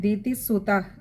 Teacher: ദിതിസുത, അവിടെ വിസർഗമുണ്ട്, പകുതി ഹകാരത്തിൽ വായിക്കുക